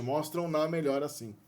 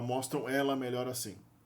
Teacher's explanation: Quando o pronome é objeto do verbo que termina com um som nasal, mostram, né? O pronome da terceira pessoa também absorve a nasalidade da consoante anterior, da vogal anterior. Então fica mostram na.